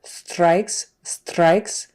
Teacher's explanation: instead of pronouncing the r with the tongue in the back of the mouth it's more in the forward and kind of rolled a little bit strikes strikes um not quite like a Spanish arabat it's not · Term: r sound